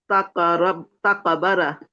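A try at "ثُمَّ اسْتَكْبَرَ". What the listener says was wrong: সুম্মাস্তাকবারো, কাফে কলকল হবে না। সুম্মাস্তাকবারো।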